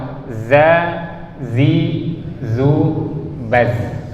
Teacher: Ujung lidah ke gusi depan bagian bawah.